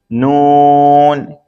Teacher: نون زبان کا کنارہ دانتوں کی جڑ کی تالو کی جانب سے ادا ہوتا ہے